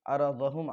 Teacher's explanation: रा के ऊपर ज़बर है तो रा पुर पड़ी जाएगी